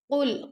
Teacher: قل قاف کو موٹا پڑھیں گے لیکن لام کو ہم باریک پڑھیں گے